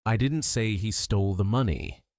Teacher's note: Stress on didn't. I didn't say he stole the money. Meaning I deny saying it.